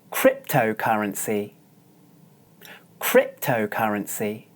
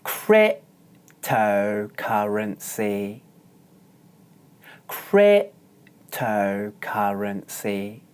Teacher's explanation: cryptocurrency as you can hear this word has five syllables and the stress is on the first syllable that means that the first syllable is pronounced high and the other four syllables are pronounced low